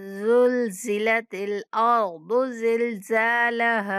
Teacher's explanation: یہ دونوں زا سیٹی جیسی آواز کے ساتھ پڑھیں گے۔ زلزلت الارض، غاد کو موٹا، زلزلت الارض زلزالها، زا کے بعد الف مدہ آ رہا ہے تو زا کو کھینچ کے پڑھیں گے، زلزالها۔